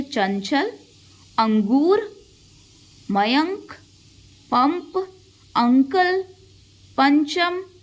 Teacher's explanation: अनुस्वार को बोलते वक्त वायु केवल नाक से निकलती है।